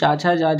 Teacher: चा, छा, जा, झा हो गए आपके संघर्षी नहीं, स्पर्शी नहीं, स्पर्श संघर्षी